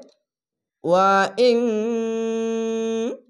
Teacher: ইকফা গুন্না হবে, বাংলা অনেস্কার মতো। তা, ইকফা গুন্নার এখানে দেখেন তা, নুন সাকিনের পাশে তা এসেছে, নুন সাকিনের পাশে তা, তার জন্য ইকফা গুন্না হবে, বাংলা অনেস্কার মতো।